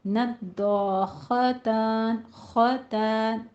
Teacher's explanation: ख्वा भी पुर हरूफ में से है, इन दोनों को पुर रखना है, लेकिन ख्वा के बाद ता को बारीक ही रखना है। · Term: ता बारीक